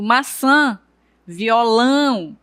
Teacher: Quando eu digo maçã e violão, nós percebemos que o tio ele vai dar um som nasalizado, né? Eu pronuncio a vogal, no caso a vogal A de forma nasalizada. O som vem para a a narina.